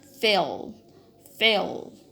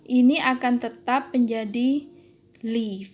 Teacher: lidah Anda itu tidak pada posisi alveolar, tapi agak ke atas pada posisi velar